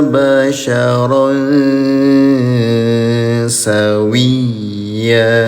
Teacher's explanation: samarkan bunyi tanwinnya ya selama dua harakat namanya ikhfa